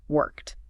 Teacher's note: That K sound. K is just air, voiceless. So the ed has to match. It becomes a sharp T sound.